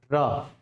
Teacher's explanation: लुंठित का मतलब है जब भी र का उच्चारण करते हो तो जीभ में क्या होती है आपकी, वाइब्रेशन, यानी ऊपर नीचे। ठीक है, तो ये जो र है लुंठित के साथ साथ हम इसे प्रकंपित ध्वनि भी कहते हैं।